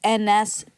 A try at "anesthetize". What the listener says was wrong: Right, and I think that TH we would say is a T. Ties, yeah. Anesthetized. She's got a lisp, though.